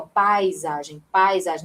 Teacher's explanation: é um ditongo, né? Um encontro de vogais numa mesma sílaba